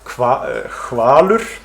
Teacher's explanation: So first of them is so-called HV pronunciation in words like hvalur, whale, with a voiceless velarfricative in initial position, where most speakers would pronounce hvalur with a stop. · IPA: [xaːlʏr̥]